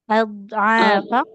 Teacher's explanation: huruf dotnya hati-hati jangan memantul.